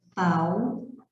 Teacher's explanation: aqui sim eu tenho ditongo e decrescente, porque a vogal veio antes da semivogal